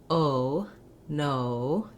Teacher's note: I start with a rounded O, and I stay rounded. I just close the jaw and relax a little. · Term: O vowel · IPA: /oʊ/